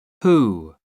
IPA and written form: huː (who)